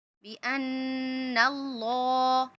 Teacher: اللہ کے لام کو پر کر دیں گے. دیکھیے اللہ کے لام سے پہلے زبر ہے نا تو اللہ کے لام کو موٹا پڑھیں گے